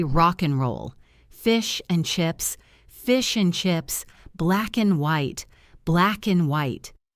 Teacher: we rarely pronounce the D at the end, and we often reduce the vowel to a schwa. So, and becomes un or just n.